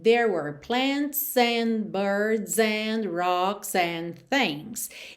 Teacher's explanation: Aqui é bem interessante você reparar como o S desses plurais vai ligando na próxima palavra · E o D das palavras and não é pronunciado mesmo, ok? Então, there were, esses S finais aí não são pronunciados, eu nem preciso falar, né?